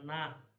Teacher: o som do N é a língua no céu da boca, na, né?